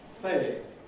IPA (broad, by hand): ˈpleɪɪŋ